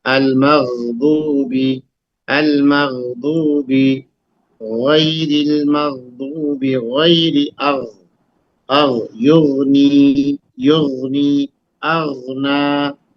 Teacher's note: اور یہ غین اور خا یہ حلق سے نکلتا ہے. شروع حلق سے جہاں زبان ختم ہوتی ہے اس کے بعد حلق شروع ہوتا ہے نا. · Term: حروف حلقی